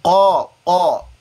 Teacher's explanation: الف کو بھی ادا کرتے ہوئے منہ بھرا جائے گا. تو الف سے پہلے جب حروف تفخیم میں سے کوئی حرف ہو، یہ الف مدہ والا ہے، تو پھر الف کو بھی مفخم پڑھا جاتا ہے.